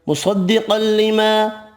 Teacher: صاد قاف یہاں بھی حروف مستعلیہ پر پڑھیں گے